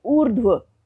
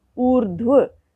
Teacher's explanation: उससे पहले स्वर रहित ध है और रेफ र का उच्चारण ध से भी पहले हो रहा है, ऊर्ध्व। आप इसका वर्ण विच्छेद देखें, उ जमा र जमा ध जमा व जमा अ।